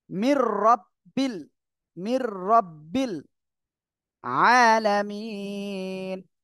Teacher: সাথে মিলিয়ে পড়তে হবে মির এই যে নুন সাকিনের পরে র ইদগামে বেলা গুন্নার অক্ষর গুন্না ছাড়া মিলিয়ে পড়বেন